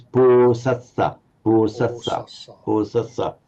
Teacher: although the stress would be on the assa, you still have to give the full length